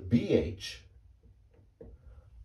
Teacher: it's not just a b as in ba as in bat but there's an h sound